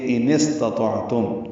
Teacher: حمزہ اقصی حلق سے ادا کریں گے، جہری صوت سے. اس میں صفت جہر ہے حمزہ میں.